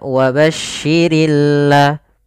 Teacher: alif lam yang kita tulis tapi dia tidak terbaca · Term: alif lam syamsiyah